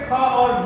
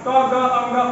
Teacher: प्रत्येक वर्ग का पहला, तीसरा और पांचवा अल्प प्राण, प्रत्येक वर्ग का दूसरा और चौथा महाप्राण। जैसे ख और भ महाप्राण, क ग अंग अल्प प्राण